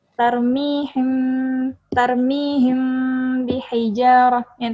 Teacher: jadi cara membacanya mendengung Ya sekitar dua sampai tiga harakat atau satu setengah Alif · makhrojul huruf nya al-khaisyum keluar dari rongga hidung karena berdengung